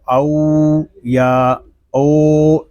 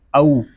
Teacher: حمزہ واو زبر او. یہاں واو لین ہے، اس کو ہم کھینچ کر نہیں پڑھیں گے. اس کو او یا او اس طرح نہیں پڑھیں گے، اس کو پڑھیں گے او.